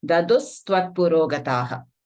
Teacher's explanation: Visarga followed by Sa will be half Sa.